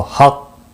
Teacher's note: وقف کی صورت میں قاف ساکن پڑھا جائے گا اور شدت کے ساتھ اس پر قلقلہ ہوگا، حق، کیونکہ یہ مشدد بھی ہے۔